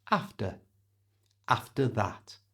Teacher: change the ER at the end of after to the schwa sound. That's that little sound.